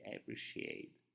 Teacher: word is pronounced as appreciate word is pronounced as appreciate appreciate there's a t sound but it's not a strong sound you can say appreciate every shade is like te it's like